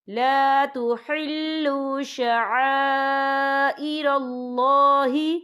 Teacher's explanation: یا ایہا الذین آمنوا لا تحلوا شعائر اللہ یا دیکھیں لا تحلوا شعا، یہاں خالص سے پہلے زبر ہے اور اس پر مد بھی ہے. یہ مد جو ہے مد متصل ہے، اس کی مقدار 4 حرکت کے برابر ہے، تو ہم اسے 4 حرکت کے برابر کھینچ کے پڑھیں گے